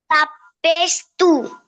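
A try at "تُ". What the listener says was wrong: তু, হ্যাঁ ঠোঁটটা একটু গোল করে,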